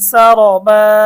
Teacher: সা র বা আলিফ দুই জবর বান, সা র বা অক্ফ করার কারণে এক আলিফ টান হবে